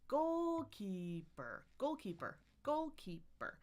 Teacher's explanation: Most words are going to have primary stress and no stress, but this one has secondary stress in the middle. I love that it's primary, secondary, no, because it's like walking down the stairs. · my pitch is going to go down just one step at a time.